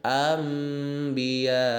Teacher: Ingat, fokus pada hak daripada hukum iklab itu sendiri, yaitu bukan hanya sekedar mengganti nun menjadi mim, tapi juga menekan 2 harokat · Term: iqlab